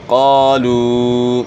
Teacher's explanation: قاف موٹے حروف میں سے ہے، حروف مستعلیہ میں سے ہے جو ہمیشہ موٹے پڑھے جاتے ہیں، اور الف سے پہلے زبر ہے، الف مدہ ہے، ایک الف کی مقدار کے برابر مد کرنی ہے۔